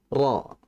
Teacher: Huruf ra itu merupakan huruf yang keluar dari tarful lisan, yaitu yang keluar dari ujung lidah. Kemudian ra ini dia memiliki sifat istifal, tipis. · Karena vokal huruf tebal pada harokat fathah adalah akhirnya o.